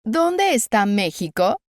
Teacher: Aquí la E final de dónde se fusiona con la primera E de está.